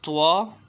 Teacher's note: Twa, Dal and the Ta comes out from the tip of the tongue and the roots of the upper front teeth.